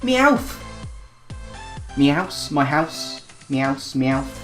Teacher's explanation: He's got a northern accent of sorts, and it's coupled together with a lisp